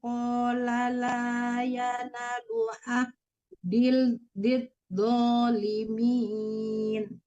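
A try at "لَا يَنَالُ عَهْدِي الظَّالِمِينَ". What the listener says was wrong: Qala la yana, nanya panjang, tadi tidak Ibu panjangkan.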